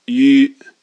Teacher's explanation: you start with e e and then round your lips and you'll find the sound is really easy to make now